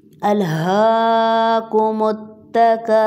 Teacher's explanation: سٹاپنگ سائن کی وجہ سے را کو ساکن کریں گے، تو اس سے پہلے پیش کی وجہ سے ہم اس کو موٹا پڑھیں گے